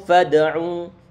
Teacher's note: fad'u ini huruf dal dia disukunkan, berarti dia adalah bacaan qalqalah, perlu dipantulkan. Fad'u bacaan mad tabi'i.